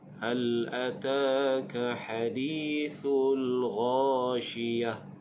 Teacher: Huruf gha makhrajnya di bahagian hujung kerongkong. Syiyah bila waqaf pada ta marbutah dibunyikan dengan bunyi ha.